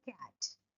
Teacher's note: So, the sound is voiceless. So, K is voiceless, velar, plosive. · back of the tongue touches the velum. Then at the same time, a soft palate is raised to shut the nasal passage of air. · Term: velar sound